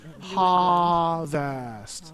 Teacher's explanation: can you cut out the r for harvest